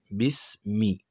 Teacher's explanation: سین کله د ژبې سر د لاندني غاښونو سرونو سره ولګي او پاسني پرې رابند شي، دې سره سین ادا کیږي، خو واضح اواز بیا راوباسو، بیس. میم د دواړو شونډو نه ادا کیږي، کوم ځای نه چې با ادا کیږي، خو دا لږ اوچ طرف ته نږدې ده.